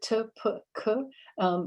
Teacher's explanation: it's voiceless because there's no vibration in your voice. And these sounds are always stressed in Finnish. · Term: voiceless stops